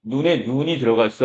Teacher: 사람의 눈은 짧게 발음하고 내리는 눈은 길게 발음한단 말이에요